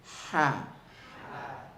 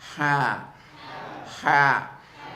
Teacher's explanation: comes from the middle of the throat and it has a lot of air coming with it